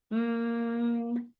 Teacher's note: a sound that is made through our nose but our lips together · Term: M sound